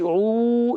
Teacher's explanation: عین واو پیش عو، یہ واو مدہ ہے، واو ساکن سے پہلے پیش آ گیا، واو مدہ ہے، ایک الف کھینچیں گے